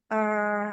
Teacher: Terus mahrotnya tengah lidah menyentuh langit-langit tengah gitu. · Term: jim